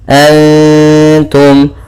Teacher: ada bacaan ikhfa hakiki, yaitu kita samarkan suara nunnya kepada huruf ta.